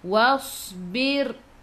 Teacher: Was masuk ke dalam sad, sad ada sukun. Sad sifat hurufnya safir, kena bunyikan berdesir. Was tebal su tebal. · Was tebal su tebal. Wasbir sebelum ra baris bawah kena baca nipis